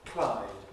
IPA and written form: klaɪd (Clyde)